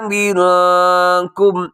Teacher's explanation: منکم نون ساکن کے بعد کاف، یہاں اخفا کیجیے گا۔